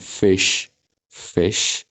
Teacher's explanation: सुरुमै अलि air release हुन्छ लिप्सहरूबाट, त्यसपछि यो साउन्ड प्रोड्युस हुन्छ।